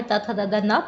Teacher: इनको बोलते वक्त जो हमारी जीवा है वो दंत को स्पर्श करती है